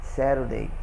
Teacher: você usa aqui o T com som de R, de arara